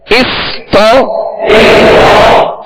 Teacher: تا کی زبر دراز نہ ہو، بغیر کھینچے بغیر جھٹکا دی آواز اور منہ کھول کر پڑھیں گے